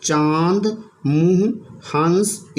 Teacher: का निशान बनाकर एक बिंदी लगा इसको बोलते हैं अनुनासिककें चंद्रबिंदु अनुनासिक का उच्चारण नाक और मुंह से होता है